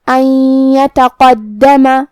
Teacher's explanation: کلمت ان یتقدم یہاں نون ساکن ہے، پھر حرف الیا ہے، کلمت یتقدم یا حروف الادغام بغنہ میں سے ہے، لہذا ہم یہ نون کو یا میں ملا کے غنہ اور تشدید کے ساتھ ادا کریں گے